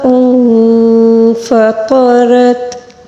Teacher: طا کو پر پڑھیں گے، را کو بھی پر پڑھیں گے